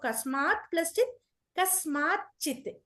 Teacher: తకారం ఉన్నప్పుడల్లా ఆ తకారం కూడా ఇంకొక అడిషనల్ చ గా మారుతుంది సో కస్మాత్ ప్లస్ చిత్ కస్మాత్ చిత్ చ కి చ వత్తు వస్తుంది కస్మాత్ చిత్ అవుతుంది.